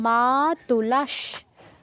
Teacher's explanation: এখানে তালব্যস আছে তাই আমরা বিসর্গ জায়গায় তালব্যস হসন্ত উচ্চারণ করব তাহলে কি হবে মা তুলাস